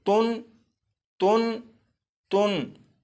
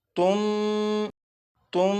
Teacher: नून साकिन को मीम से बदलेंगे और गुन्ना करके पढ़ेंगे